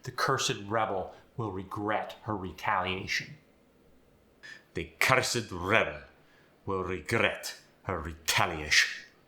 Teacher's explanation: guess what you get to roll your r's with the German accent